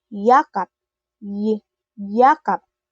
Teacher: ginagawa sa gitnang bahagi ng dila sa matigas na ngala-ngala o hard palate sa ingles. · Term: malapatinig na palatal